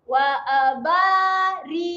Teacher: Dia baca pendek sahaja qa ni. Masukkan terus kepada bunyi wa. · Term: Qa pendek